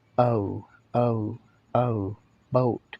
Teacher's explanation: oh the o sound oh yeah it's also a monophthong although the professionals will tell you that it's an uh followed by an ooh